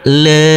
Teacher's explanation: Huruf mim boleh kita baca panjang dengan 2, 4 maupun 6 harokat